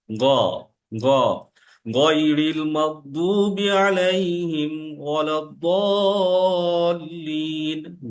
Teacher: উচ্চারণটা গ, কিন্তু এখানে কিন্তু হালকা কর্কশ কর্কশ ভাব থাকবে, এবং উচ্চারণটা হবে ঠিক আমার গলার উপরের দিক থেকে। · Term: গইন